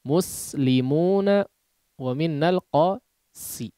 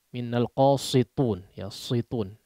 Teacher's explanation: Sin ini tipis ya. Sebetulnya sama dengan huruf shad pengucapannya. Bedanya tebal dan tipisnya. Ya, bedanya hanya tebal dan tipisnya saja.